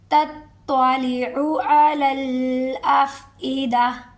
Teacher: تطلع، عین کو بھی، عین کی بھی پوری غور کریں گے کہ عین کی جگہ حمزہ نہ ہو جائے، عین کی آواز آئے